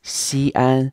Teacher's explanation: so this place CN is pronounced in two first tones to high constant pitch or level pitch tones